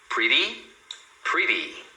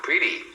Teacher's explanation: quando eles falam sobre esse D rápido, que é o quick D, é porque a ponta da língua, ela só bate no céu da boca. É a mesma coisa que acontece quando nós falamos o R.